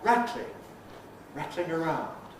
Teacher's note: The L can become non-syllabic.